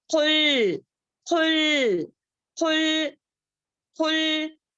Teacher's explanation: کاف جو ہے باریک ہے، خوف جو ہے خلخلے کا لیٹر ہے